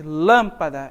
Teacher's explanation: tá aqui percebo que ela é a sílaba mais forte lâmpada Então como ela é uma proparoxítona ou seja sílaba tônica está na antepenúltima sílaba